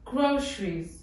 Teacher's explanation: в Нигерии говорят это слово через Ш